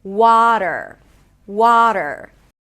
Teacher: The primary stress is on the first syllable. So, make sure you make it a little longer.